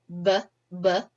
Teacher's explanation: change the sound for example B is a voice Bal stop our vocal folds vibrate so it's voiced you can feel it on your throat BB our lips come together meaning bilabial that's our place of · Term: voiced bilabial stop